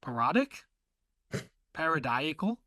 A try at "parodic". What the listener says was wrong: sound like you said erotic at first.